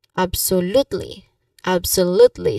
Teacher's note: you stress on the third syllable. The third syllable is l absolutely absolutely.